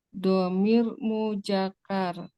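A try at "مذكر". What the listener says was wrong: Bukan mujakar, muzakkar. Za. Muzakkar.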